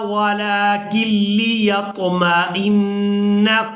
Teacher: کاف کو ہم نے لام مشدد کے ساتھ ملانا ہے، نون ساکن کو ہم چھوڑ دیں گے